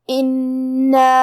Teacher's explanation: کلمت انا میں کیونکہ نون پہ تشدید ہے تو ہم 2 حرف کے برابر نون کو پڑھیں گے کیونکہ تشدید کی اصلیت 2 حرف ہے.